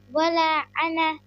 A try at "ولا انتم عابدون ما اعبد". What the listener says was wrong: انا تو نہیں ہے، یہ انا ہے یا انتم ہے؟